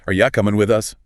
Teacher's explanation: You becomes ya. Right, it reduces. The rhythm is quicker.